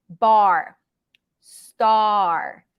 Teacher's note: ninety percent vowel ten percent r